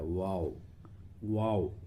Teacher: دونوں ہونٹ جبکہ پورے نہ ملے، جس کو کہتے ہیں ناتمام ملے، پورے نہ ملے، اس سے واو متحرک نکلتا ہے، واو واو۔